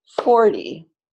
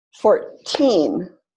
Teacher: 40 stress on the first syllable 14 stress on the second syllable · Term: stress pattern